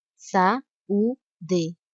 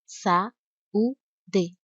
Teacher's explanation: Como essas duas letras são vogais, elas não podem ficar na mesma sílaba. Esse encontro vocálico é chamado de hiato, ou seja, as vogais pertencem a sílabas diferentes.